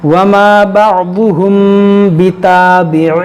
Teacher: یہاں پر ہوگا اخفاء شفوی، یعنی یہاں پر غنہ کریں گے